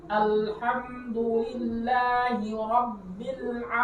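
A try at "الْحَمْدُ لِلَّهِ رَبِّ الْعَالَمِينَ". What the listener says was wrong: Nah, pas ro, o itu kan bunyinya o, mulutnya dibulatin. O, ro. Masih Rabbil kayak nekan dikit, bukan didengung ya, tapi macam nekan aja. Rabbil alamin.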